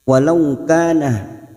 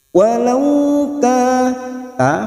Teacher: fathah bertemu sukun, huruf layin artinya lunak, melunakkan dua huruf ini seperti bertemu dengan huruf u